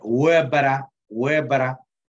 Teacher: es una mitad L, mitad R,